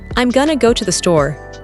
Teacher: Notice that I am became I'm, and going to became gonna.